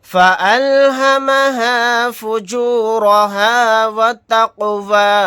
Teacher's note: جزم ہے، یعنی قاف ساکن ہے تو یہاں پر قلقلہ ہوگا، یہاں پر اس را کو موٹا یعنی پر پڑھیں گے کیونکہ را کے اوپر زبر ہے۔ · قاف کے اوپر جزم ہے، یعنی قاف ساکن ہے تو یہاں پر قلقلہ ہوگا